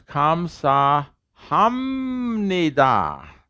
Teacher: n what's the rule uh nasal will nasalize the preceding stop how do you nasalize a p it's an m right a p nasalized becomes an m